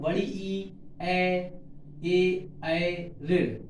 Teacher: अगर जीभ का अग्रभाग उठा तो बड़ी ई, ए ऋण